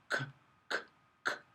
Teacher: There's no vibration here, k, k, k. And you feel the back of your tongue touching the velum. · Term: k sound